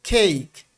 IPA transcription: eɪ